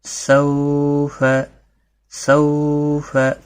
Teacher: تھوڑا نرمی کے ساتھ کھینچ کر ادا کرنا ہے، آدھے الف کے برابر